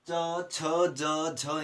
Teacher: जितने भी च वर्ग के व्यंजन है उनका उच्चारण स्थान है तालु